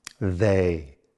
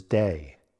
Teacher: In THEY my tongue is lightly between my teeth. In DAY my tongue touches the roof of my mouth.